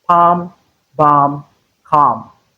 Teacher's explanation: But letter L is not realized in these words. So whenever you have a structure like this, a word structure like this, note that you're likely not to have the sound of the consonant letter L. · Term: long R